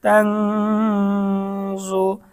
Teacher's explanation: জবর তাং জ পেশ জু তাংজু তাং এখানে ইকফার গুন্না হবে নুন সাকিনের পর ইকফার হরফ জ এসেছে গুন্না সহ স্পষ্ট পড়তে হবে